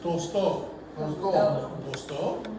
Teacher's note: I'm still putting the stress on the O, the second O.